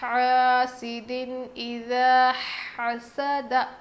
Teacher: دو زیر کے بعد حروف حلقی میں سے حمزہ آیا ہے، اسی لیے ہم نون کی آواز کو ظاہر کر کے پڑھیں گے